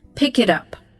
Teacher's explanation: linking. Where a consonant at the end of a word flows right into a vowel starting the next word.